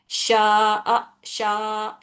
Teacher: زبر ہے اور کھینچنے کے لیے استعمال ہو رہا شا، شا، شین کی آواز کھینچ رہے ہم، الف سے پہلے زبر آنے سے مد اصلی ہو رہا